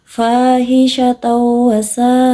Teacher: panjang bacaan dari mad wajib muttasil adalah 6 harokat atau 3 alif